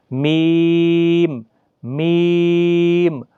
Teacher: دونوں ہونٹوں کی خشکی والے حصے سے ادا ہوتا ہے، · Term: شفویہ